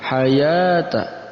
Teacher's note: Di situ juga ada ya yang berharakat fathah tegak. Hayata, dibaca 2 harakat pula karena mad tabi'i